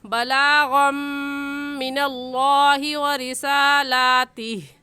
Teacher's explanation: اس آیت میں اللہ بلاغم سے تنوین کے بعد حروف یرملون میں سے میم آ گیا ہے، اس وجہ سے غنّے کے کرنے کے ساتھ ساتھ ہم ادغام بھی کریں گے اور ایسے پڑھیں گے بلاغن کی جگہ بلاغم، اس غین کو میم کے ساتھ ملائیں گے کیونکہ یہاں پر ادغام ہو رہا ہے۔